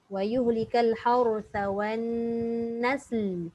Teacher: Sin dah mati, bunyikan lam yang mati. Jangan tak bunyi lam. Tak bunyi lam nanti dia tak sampailah maksud binatang ternakan tu.